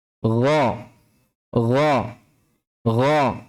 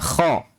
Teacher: Dan tidak perlu menggetarkan tenggorokan. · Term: ghayn